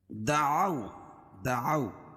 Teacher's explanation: واو ساکن سے پہلے زبر ہو تو واولین اس کو نرم آواز کے ساتھ جلدی ادا کریں گے۔